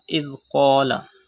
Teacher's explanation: Pronounce Qaf with thicker voice because Qaf is a mustaliya letter.